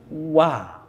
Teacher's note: Karena huruf waw memang didasari cara pengucapannya dengan 2 bibir yang dimonyongkan. Jadi fathahnya dimonyongkan bibir baru buka mulut, wa.